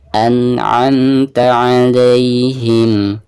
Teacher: Suara ain itu keluarnya dari tengah tenggorokan.